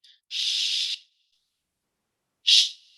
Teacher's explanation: The air's rushing through the teeth and over the tongue, and the lips are helping to form the shape. Almost creates little bubbles.